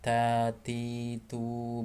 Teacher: Adapun huruf ta dia keluar nafas ketika diucapkan